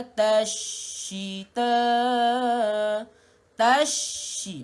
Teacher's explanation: Rapatkan bibir, mim yang bertanda mati, rih, matikan ha pedas di kawasan tengah kerongkong, rih la tashita, tashi, masukkan ta ke dalam huruf shin yang bertanda sabdu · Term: alif lam syamsiah